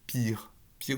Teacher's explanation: Le pied palatalisé s'observe devant les voyelles antérieures et notamment devant le i, comme dans pire. Pire, vous avez un pe palatalisé.